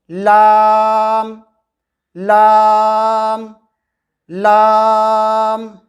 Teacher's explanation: زبان کے باریک کنارے کو سامنے والے اوپر کے دانتوں کے مسوڑھوں سے لگا کر باریک آواز میں کہیں گے لام لام لام۔